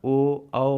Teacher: जो वर्तुल होते हैं जिनको बोलने में मेरा मुंह गोल हो जाए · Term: पश्च स्वर